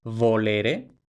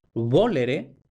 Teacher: completa hasta V, mientras que en sardo tenemos volere, es decir, con la fricativa bilabial, no la labiodental, sino la bilabial